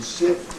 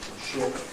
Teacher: the S sound, as in sip, would have no rounding, and in ship would have some